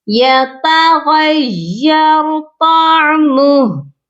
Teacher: یہاں پر ہم ہا کو ساکن کریں گے، اس کے پیش کو نہیں پڑھیں گے،